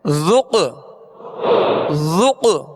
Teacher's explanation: اس میں قلقلہ ہوگا، آواز میں جنبش ہوگی اور آواز لوٹتی ہوئی آئے گی